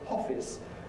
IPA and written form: ˈhɒfɪs (office)